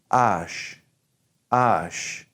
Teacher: H in French is mostly silent and so when we say H we're not gonna go like we do in English we're not gonna breathe it